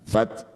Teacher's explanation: ta sukun punya sifat namanya hames. Jadi memercik udara fat namanya percikan berarti jangan berlebihan.